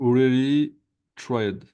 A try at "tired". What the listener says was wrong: C'est pas TR, c'était I-R-E-D. Tired. Tired. Tired.